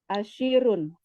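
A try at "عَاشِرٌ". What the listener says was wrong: Asirun. Ya harus jelas itu huruf ainnya. Asir. Oh, enggak ada ya? Alif atau ain? Alif, sin, ro. Oh, Asirun. Oh iya ya, asirun.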